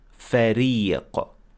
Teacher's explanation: You have to pronounce the ra as empty mouth, so you pronounce it as ra, فريق.